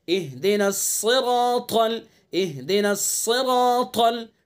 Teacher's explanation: साद को पुर, रा को पुर, अलिफ को पुर, ता को पुर, सबको पुर पढ़ेंगे इनको, साद रा अलिफ ता।